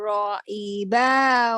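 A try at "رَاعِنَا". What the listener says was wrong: ro'ina, bukan ro'ibah, duduknya di atas.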